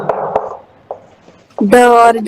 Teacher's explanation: द्विगुण और उत्क्षिप्त व्यंजन है ड और ढ